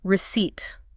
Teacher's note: There is a giant P right in the middle of this word. >> There is indeed a P and it is 100% entirely silent.